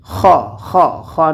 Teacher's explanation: খ হরফটিকে আমরা উচ্চারণ করবো কণ্ঠনালীর শেষ ভাগ হইতে